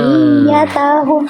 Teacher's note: Dzurriyyatahum yang ditekan nabar yang ya-nya.